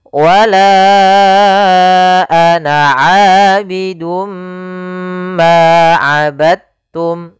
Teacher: masukkan huruf dalnya kepada huruf ta